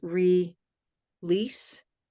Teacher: this here's the syllable right the end of the syllable so light L is at the beginning of a of a syllable